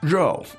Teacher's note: the noun here is RO and that's fourth tone